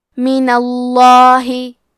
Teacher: کلمت من کے آخری میں نون پہ زبر ہے، لہذا لفظ الجلالہ کے لام کا حکم ہے تفخیم، تو ہمیں حرف اللام کو موٹی آواز میں پڑھنا ہے